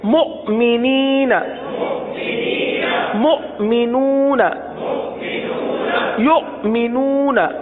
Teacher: حمزہ ساکنہ پر جھٹکا دیں گے